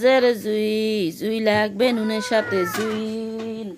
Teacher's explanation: জ জিব্বার আগা থেকে মোটাভাবে আদায় হবে